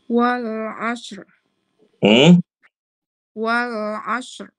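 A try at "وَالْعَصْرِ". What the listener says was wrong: Ini roknya udah kelihatan tapi kurang, Bu. Tapi ini ibu-ibu semuanya belum dapat tebelnya ya. Huruf roknya terbaca.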